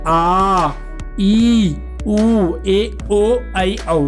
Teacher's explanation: ह्रस्व से दुगना समय लगता है दीर्घ में।